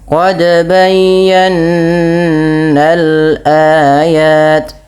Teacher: kita harus menyempurnakan gunahnya, yaitu bunyi suara nun yang ditahan